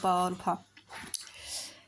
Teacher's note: इन सब का उच्चारण स्थान ओष्ठ होता है